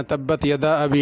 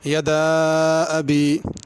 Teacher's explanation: اس میں ایک تو یدا پہ مد ہے، اس کو کھینچ کے پڑھنا، تبت یدا ابی نہیں پڑھنا، یدا ابی۔